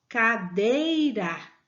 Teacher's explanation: sílaba tônica é dei vocês estão vendo que ela é a penúltima sílaba